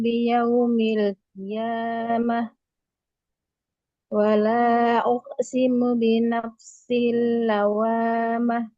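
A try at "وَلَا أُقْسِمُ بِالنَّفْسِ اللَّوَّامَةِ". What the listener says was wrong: Nunnya tasydidkan, lamnya tasydidkan. Wa la uqsimu bin nafsil lawamah. Ditahan. Bin naf bin nafsil lawwamah.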